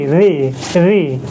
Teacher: ऋ ऋ दोस्तों मूर्धन्य से बोला जाता है